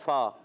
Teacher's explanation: اوپر کے دانتوں کے کنارے نچلے ہونٹ کے تر حصے سے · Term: حروف شفویہ